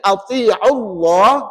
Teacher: Kalimah Allah ni spesal sikit dia punya hukum bacaan untuk kalimah ini tadi atiullah maka nama Allah tu dibaca apa tebal tebal dan tebalnya pada nama Allah itu adalah pada sebutan lam · Dan tebalnya pada nama Allah itu adalah pada sebutan lam. Kerana pada ejaan Allah itu ada alif, lam, lam, ha.